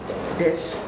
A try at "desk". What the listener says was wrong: Desk. The S sound, it must be pronounced. Desk.